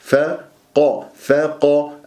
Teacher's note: الفاء مرققة، القاف مفخمة، مرتبة ثانية مفتوحة